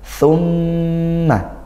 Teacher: Thumma mim bertasydid dibaca dengung gunnah ya.